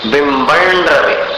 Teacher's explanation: बिंबम का जो अनुस्वार है उसको र में मिलाना, बिंबन रवे, ऋण जैसा उच्चारण हो जाए, ऋण के समान।